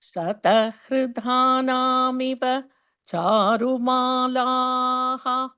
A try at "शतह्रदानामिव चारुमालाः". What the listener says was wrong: This is hra, not hr. Shatahradanamiva. Shatahradanamiva charumalaha.